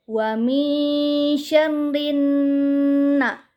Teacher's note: Alif lam syamsiah adalah apabila ada alif lam yang bertemu dengan salah satu huruf syamsiah, yaitu nun. Di sini alif lamnya tidak dibaca, melainkan langsung dimasukkan ke dalam huruf syamsiahnya. Dan salah satu ciri dari alif lam syamsiah adalah setelah alif lamnya ada huruf yang bertasydid. · Gunnah adalah apabila ada huruf nun yang bertasydid, maka wajib dibaca dengung dan ditahan 2 harokat